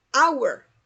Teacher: En este caso tenemos un sonido de H muda. Hour. Y por tal motivo es un sonido de vocal.